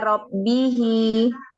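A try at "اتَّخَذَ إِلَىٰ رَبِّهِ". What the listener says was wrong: Jangan seperti ghin. Memang makhrajnya sama. Kho sama ghin sama. Makharijul hurufnya atau tempat keluarnya sama. Huruf kho dengan huruf ghin. Maka dijelaskan. Kho. Jadi jelaskan jangan seperti huruf ghin ya, jangan seperti huruf ghin. Huruf ghin yang apa namanya sukun juga jangan memantul.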